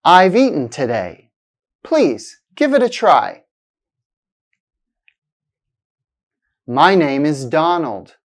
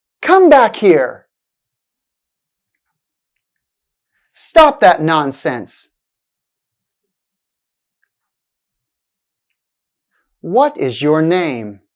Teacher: it sounds like a fall in the pitch of the voice at the end of the utterance it's often used in statements commands wh questions and exclamations here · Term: the falling intonation